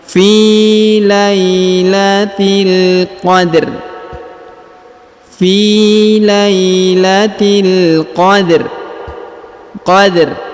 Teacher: huruf ro-nya disukunkan dengan bacaan tipis